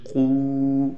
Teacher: تو اس واو کو ایک الف کے برابر کھینچ کر پڑھیں گے